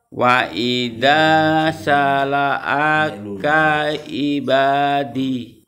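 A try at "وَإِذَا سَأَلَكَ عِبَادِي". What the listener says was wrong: tadi di situ bukan sala'aka tapi sa'alaka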